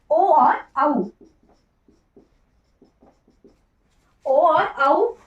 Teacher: कंठ ओष्ठ वर्ग, तो कंठ ओष्ठ वर्ग में आता है ओ और औ दोनों जो है कंठ ओष्ठ वर्ग में आते हैं